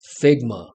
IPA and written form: ˈfɪgmə (Figma)